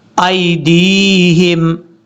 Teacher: یہاں پر بھی دال کے بعد جو یا ہے، یہ یا مدہ ہے، اس کو لمبا کریں گے 1 الف کی مقدار